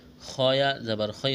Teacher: وما عند اللہ خیر، خیا زبر خی، خا کو موٹا کرنا ہے، را لام دو پیش رول، خیر، یہاں را کو موٹا کریں گے، دو پیش تنوین ہے، تنوین کے بعد لام ہے، ادغام کریں گے، غنہ نہیں کریں گے۔